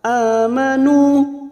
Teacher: nu duma diikuti waw sukun 2 harokat